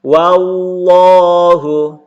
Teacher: Jadi, hukum lafzul jalalah ketika huruf sebelumnya berharokat fathah yang berbaris atas atau berharokat dhammah, semuanya berbaris atas, ketemu dengan lafzul jalalah yaitu lafaz Allah, maka dibaca tebal